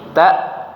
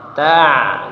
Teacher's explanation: Hamzah tadi langsung berhenti, ta. Kemudian ain agak mengalir suaranya